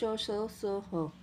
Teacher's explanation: इनके उच्चारण में श्वास वायु मुख से रगड़ खाती हुई बाहर निकलती है, जिससे ऊष्मा अर्थात गर्मी पैदा होती है। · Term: ऊष्म व्यंजन